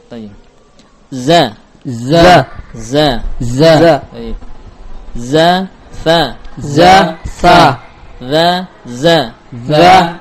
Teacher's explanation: perbedaannya pada sifat as-safir yang dimiliki oleh zai dan tidak ada pada dhal